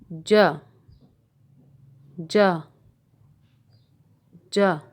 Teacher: زبان اوپر کے تالو کے درمیانی حصے سے لگائیں۔ زبان اوپر کے تالو کے درمیانی حصے سے لگا کر جیم کو ادا کیا جاتا ہے۔ آپ کو یہ تصویر میں بھی نظر آ رہا ہوگا، زبان کا درمیان اوپر کے تالو سے لگا ہوا ہے۔ · اپنی زبان اوپر کے تالو کے درمیانی حصے سے لگائیں اور پھر ہونٹوں کو کناروں کی طرف سے کھولتے ہوئے جیم کی آواز ادا کریں